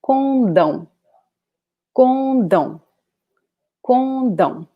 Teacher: Here we have the last syllable as the strongest one.